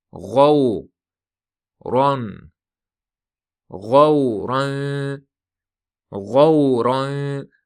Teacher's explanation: Ro yo'g'on talaffuz qilinadi, keyin uning tanvini ixfa qilinadi.